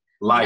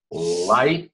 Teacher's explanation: Light, out of the sides of the mouth.